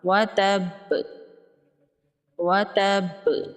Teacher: تنوین کے بعد حروف یرملون میں سے واو ہے تو یہاں پر ادغام ہوگا غنہ کے ساتھ۔ با حروف قلقلہ میں سے ہے تو یہاں پر با پر قلقلہ ہوگا